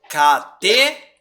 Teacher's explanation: a sílaba tônica é a última e não a a penúltima